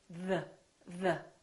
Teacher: the tip of the tongue is touching your upper teeth. And there's an airflow coming out while the tongue is touching the upper teeth. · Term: TH sound